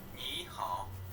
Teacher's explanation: the first sound you heard was second tone, and the second sound is third tone.